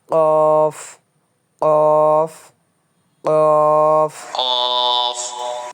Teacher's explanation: গলার একদম নিচে প্রেশার দিয়ে উচ্চারণ করতে হবে, একদম নিচে।